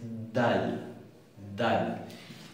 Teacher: Estaría en el medio de una T y de una D. Es más dura que nuestra D. Es dal, dal.